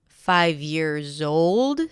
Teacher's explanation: five years old - stress on 'old', years in plural.